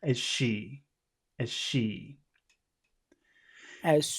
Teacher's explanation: if you say the word as it's a very big long sound but in the middle of a phrase it becomes most of the time it would be a pretty small sound